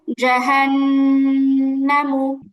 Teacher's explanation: খেয়াল করতে হবে হরকতের উচ্চারণ তাড়াতাড়ি পড়তে হয় এখানে মাদের কোন কিছুই নেই মাদের হরফও নেই মাদের হরকতও নেই তাহলে টান হবে না আবার